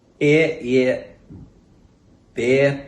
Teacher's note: The diphthong in words like air, chair, and hair is closer and sounds like ear rather than RP air.